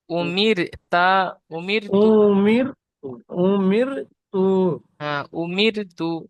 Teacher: র সাকিনের আগে জের এসেছে তাই র কে বারিক করে পড়তে হবে